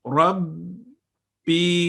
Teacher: یوحی، ای، یسر لی، امری، ربی. یہاں پہ با مشدد ہے، اس کی تشدید 2 سیکنڈ اور پھر کسرہ کی آواز ربی. تو آپ نے دیکھا کہ یہ یا مدہ کی آواز ای ساؤنڈ کو 2 سیکنڈ لمبا کر دیتا ہے، اس سے زیادہ بھی نہیں کرنا اور کم بھی.